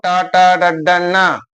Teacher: ನಾಲಿಗೆಯ ಮೇಲ್ಭಾಗದಲ್ಲಿ ಹುಟ್ಟುವಂತ ಅಕ್ಷರಗಳು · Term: ಮೂರ್ಧನ್ಯ